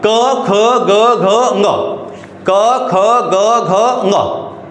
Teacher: जो कंठ की सहायता से बोले जाएंगे वो कंठ कहलाएगा।